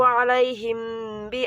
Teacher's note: disebut dengan bacaan ikhfa syafawi sebab mim sukun bertemu dengan ba